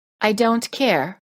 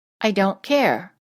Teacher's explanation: British English tend to release the final T when the next word begins with a consonant